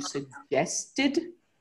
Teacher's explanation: It comes after a T, so it's pronounced as a separate syllable, as ED.